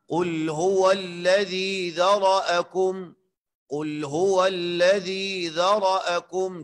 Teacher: ذال کے بعد یا مدہ ہے، اور یا مدہ میں مد جو ہے ذاتی مد وہ ایک الف کے برابر ہے، زیادہ نہیں کھینچنا ہے اس کو